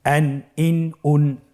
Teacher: তানবিনটি আসলে বাংলা আমরা যেভাবে দন্ত ন উচ্চারণ করি, অন্য শব্দের সাথে কানেক্টেড করে সেভাবে উচ্চারণ হবে · আপনারা দেখতে পাচ্ছেন যে প্রত্যেকটি উচ্চারণের শেষে দন্ত ন উচ্চারিত হচ্ছে